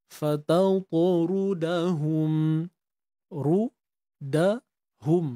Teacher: ra bari depan ni kita tahu kena tebal, angkat pangkal lidah kita.